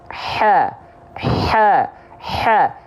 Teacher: Ha, ikuti, tengah tenggorokannya ditekan. Pasti kalau teman-teman tepat melafalkan ha kecilnya dari tengah tenggorokan, pasti nafas yang keluar akan berbisik dengan otomatis.